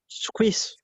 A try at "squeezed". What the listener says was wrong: no squeezed ចេញអក្សរ T yeah squeezed squeezed